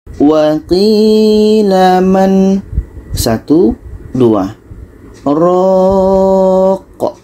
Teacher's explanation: Jadi pada man ini kita berhenti 2 detik, baru kita lanjutkan dengan ro. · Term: saktah